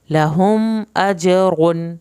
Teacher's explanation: میم کو یہاں پہ نہیں ہلانا، جیم پہ قلقلہ کرنا ہے، را کو پر کر کے پڑھنا ہے ، اور را کے اوپر جو تنوین ہے اس کو لمبا